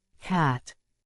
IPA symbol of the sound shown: æ